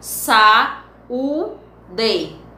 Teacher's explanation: essa separação de duas vogais em sílabas diferentes é o que chamamos de hiato